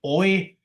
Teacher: The first one is sometimes called the core, the second half is called the off-glide because it's the less important one. So in a diphthong like oi, you have o as the core, I as the off-glide